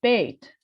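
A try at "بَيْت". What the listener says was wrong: bay? Not bait. It's bay. have on the ba, and a sukun here. Bay. Bay.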